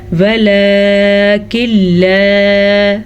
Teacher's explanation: ستذکرونہن ولیکن لا، نون ساکن کے بعد لام آ گیا ہے تو یہاں پہ ادغام بلا غنہ کا قاعدہ ہوگا، یعنی کہ تجوید کی روح سے ادغام بلا غنہ ہوگا. ہم بغیر غنّے کے اس کو پڑھ کے چلیں گے